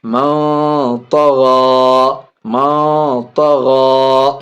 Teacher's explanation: غین خرا زبر غا، من طغا، من طغا. نون ساکن کے بعد طا حرف اخفا میں سے ناک میں آواز چھپا کے پڑھیں گے.